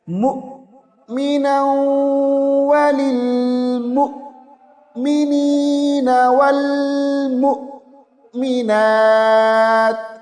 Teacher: حمزہ ساکن کے اوپر ہم تھوڑی دیر کے لیے رک جائیں گے، جھٹکا دیں گے